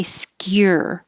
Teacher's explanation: while your tongue is going up high in the back for the K, you're already very high for the Y